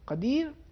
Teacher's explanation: قاف کو عربی زبان میں تھوڑا موٹائی کے ساتھ استعلاء کے ساتھ ادا کرنا ہے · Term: حرف قاف